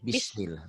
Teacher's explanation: Jangan bisa, jangan ada e-nya.